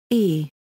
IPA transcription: ɛ